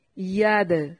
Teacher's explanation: دال کو ہلا کر پڑھنا ہے. حروف قلقلہ ہے اس لیے دال پر قلقلہ کریں گے